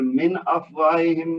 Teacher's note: نون ساکن کے بعد حمزہ ہے جو کہ حروف حلقی میں سے ہے، تو نون کا اظہار ہوگا